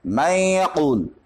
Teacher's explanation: یہاں پہ نون کے اندر صفت غنہ ہے، جب ہم ادغام کرتے ہیں یا کے اندر تو اس کی صفت غنہ باقی رہ جاتی ہے من یقول، لہذا یہ ادغام ناقص ہوگا.